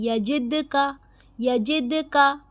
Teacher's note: یہاں پہ دیکھیں یجد کا، یہاں پہ دال پہ ہم نے قلقلہ کیا کیونکہ دال قلقلہ لیٹرز میں سے، ٹھیک ہے. دال پہ ساکین ہے، دال کو ہلائیں گے